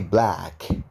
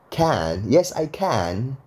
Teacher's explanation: kalau di British itu suaranya jadi agak ke a gitu guys A A A tapi dia cenderung ke e sedikit jadi dibalik